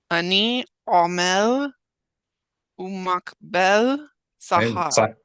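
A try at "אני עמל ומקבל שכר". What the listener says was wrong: Silent shua, unless you know for sure. Ani amel umkabel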